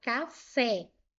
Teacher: Café, última sílaba é mais forte. Terminou em e, terminou em e, eu preciso acentuar oxítona terminado em e, eu vou acentuar.